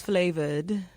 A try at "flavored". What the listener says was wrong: It sounds like it has a U in it. Flavored.